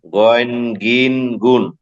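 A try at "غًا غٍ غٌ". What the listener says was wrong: গয়েন কোথায়? গান গিন গুন। হবে যখন কোনো হরকত থাকবে না, শুধু হরফের নাম হচ্ছে গয়েন, আর ওটার উপর দুই জবর হলে হয় গন।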